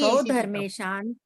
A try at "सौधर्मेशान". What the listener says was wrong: सौधर्म ईशान बोलो, 2 मात्रा है, सौधर्म ईशान।